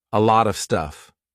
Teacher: starts with a consonant there is a big big chance that a native speaker would replace of with ah